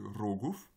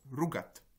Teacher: le O de roguf devient OU dans rugat, avec l'accent sur le A